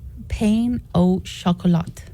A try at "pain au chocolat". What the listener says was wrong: Pan au chocolat. And you don't say the T at the end. No, it's chocolat.